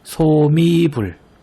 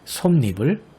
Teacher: 앞말이 자음으로 끝나고 뒷말이 이나 반모음 이로 시작할 때 니은이 그 사이에 덧붙는 현상이에요. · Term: 니은 첨가